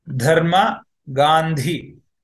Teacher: the Mahaprana version has a H in between after D